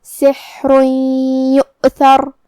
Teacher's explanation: کلمت یؤثر میں یہاں واو پہ حمزہ ہے تو ہمیں حمزہ کو ظاہر کرنا ہے. حمزہ کی ادائیگی حلق کے نیچے والے حصے سے ہے · پھر یہاں حرف الثا ہے. ثا کو ہم زبان کے سر اور اوپر والے دانتوں کے اندرونی کناروں سے ادا کریں گے. آخر میں حرف الراء پہ رکیں گے تو اس پہ جزم سے رکیں گے، تو یہاں راء کا حکم ہوگا تفخیم، تو ہمیں راء کو موٹی آواز میں پڑھنا ہے.